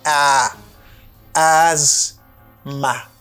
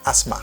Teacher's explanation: put it like a Z sound. You say as and then you have short A sound.